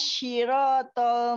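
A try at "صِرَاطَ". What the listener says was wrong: Bukan si, bukan si.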